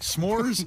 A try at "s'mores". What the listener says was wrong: S'mores. No, stop taking H out. You're saying schmear. No, it's SM.